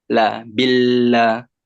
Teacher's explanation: Lam itu ujung lidah menyentuh kepada langit dekat dengan gusi.